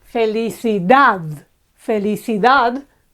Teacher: felicidad felicidad again it's the last syllable that's accentuated